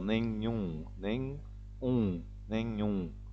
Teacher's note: de novo usa duas vezes o som nasal